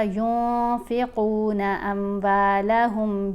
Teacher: ٹھیک ہے، جہاں احفا کرنے کا طریقہ کیا ہے کہ نون کی آواز کو ہم نے ناک میں چھپا کر پڑھنا ہے، ینفقون نہیں پڑھیں گے، نون کو بہت واضح نہیں پڑھنا، ینفقون، ایک الف کی مقدار جتنا ٹھہرنا بھی ہے۔